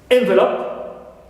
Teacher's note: second syllable is stressed, and also the first syllable, first vowel in it is reduced to e